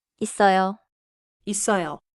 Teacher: Not 이서요, but 있어요, with 쌍시옷 strong in the middle.